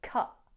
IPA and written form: kʌʔ (cut)